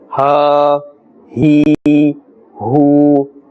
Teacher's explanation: The pull must be equal to the duration of an alif, one alif. Ha, he, hu.